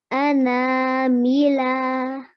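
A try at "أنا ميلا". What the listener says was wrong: Okay, make sure you don't elongate the lam at the end.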